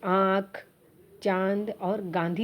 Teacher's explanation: दूसरा है अनुनासिक। इनका उच्चारण नाक और गले दोनों से होता है